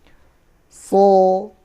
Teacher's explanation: Kalau so dia termasuk huruf tebel, makanya lidah bagian belakangnya agak ke atas.